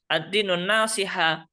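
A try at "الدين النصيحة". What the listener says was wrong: afwan ad-dinu an-nasiha spotnya yang panjang coba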